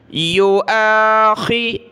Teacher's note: خا کو گلے سے نکالیں۔ یو آخی، ذال پر زبان نکالنی ہے اور اس ذال کو لفظ اللہ کے ساتھ ملانا ہے۔